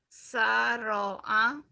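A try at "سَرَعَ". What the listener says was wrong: sara'a Sara'a bukan saro'a ya. Sara'a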